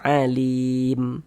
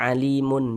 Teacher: Nah, ini kita berhenti di huruf mim. Huruf mim tidak dibaca panjang, hurufnya kita sukunkan.